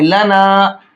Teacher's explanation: الف سے پہلے اگر زبر ہوتا ہے تو وہ الف مدہ ہوتا ہے، اس کو ایک الف کی برابر کھینچ کر کے پڑھتے ہیں۔ تو یہاں ہم اس کو ایک الف کی برابر کھینچیں گے، لنا۔